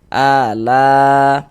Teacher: A ini dibaca panjang, mad badal panjang 2 harokat.